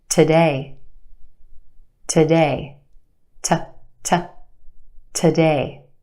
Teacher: We stretch that sound and put it in the spotlight. The first syllable is where we have our schwa sound.